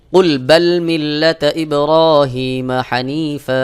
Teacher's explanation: আমি যদি ওয়াকফ করি তাহলে হানিফা এক জবর উচ্চারণ করে এক আলিফ টান দিতে হবে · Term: মাদ্দেওয়াজ